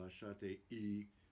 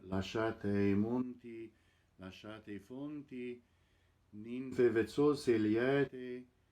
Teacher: You note that you slur all vowels together. There is absolutely no glottal stop in Italian.